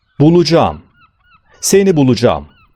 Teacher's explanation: a, yumuşak g ve ı harflerinin art arda sıralandığını görüyoruz. Yani böyle bir düzende kendinden önceki ünlü harf olan a uzatılır.